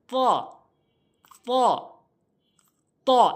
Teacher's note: জিহ্বার আগাটা সামনে দুইটি দাঁতের গোড়াতে লাগাবেন